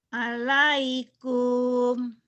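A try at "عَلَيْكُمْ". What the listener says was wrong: Salah. Lebay itu mah Bu. Itu mah lebay. Alaikum gitu Bu, nggak ada yang panjang. Alaikum gitu Bu.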